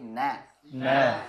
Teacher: Jangan sampai na-nya ikut tebal.